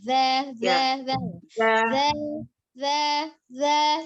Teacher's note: Ujung lidahnya ada ujung gigi di atas.